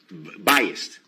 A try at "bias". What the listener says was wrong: Bias? No, bias. B-I-A-S. There's no T at the end. Bias.